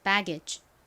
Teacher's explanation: 이 배 부분에 강세 줘서 한 번 더 해볼게요